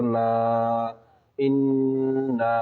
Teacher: مد منفصل ہوگا اس لیے کہ مد کے بعد حمزہ دوسرے کلمے میں ہے